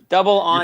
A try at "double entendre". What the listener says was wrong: Don't say it like a question, man. Just go with it.